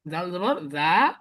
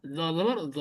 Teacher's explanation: জল জবর যা দেখেন উচ্চারণ করলে আপনার ঠোট প্রসারিত হয়ে যায় আর জবর জ তাহলে এটা গোল থাকে